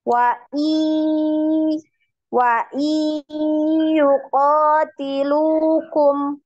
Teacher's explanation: tetap digunah ya. Masih ada suara dari hidungnya. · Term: gunnah